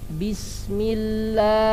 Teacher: Nah, ini suara panjang pada lam, la.